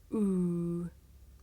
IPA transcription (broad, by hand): uː